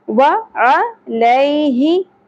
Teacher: یا ساکن سے پہلے زبر حرف لین نرمی سے ادا کرنا ہے